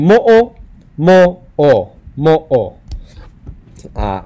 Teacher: that pause in between the first o and the second o there's a literal pause in between vowels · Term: okina